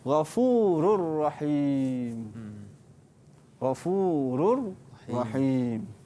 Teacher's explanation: kita memasukkan huruf tetapi tanpa mendengungkan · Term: bilagunnah